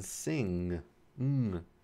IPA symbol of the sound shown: ŋ